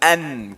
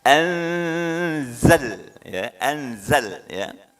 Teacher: Kalau an ujung lidah itu nempel. Tidak tepat. Ya, yang betul adalah ujung lidah renggang. Anzal ya, zai, ya, jangan sampai bunyi huruf yang lain atau inna anzal, bukan ya, ini zai.